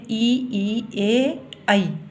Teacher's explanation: अग्रभाग यानी जीभ का अग्रभाग काम करता है ई, ए और आई को बोलने में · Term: अग्रस्वर